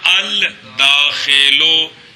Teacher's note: لام کو دال کیا، دال کا دال میں ادغام کیا